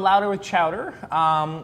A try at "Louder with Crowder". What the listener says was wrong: I think it's Louder with Crowder. You said chowder.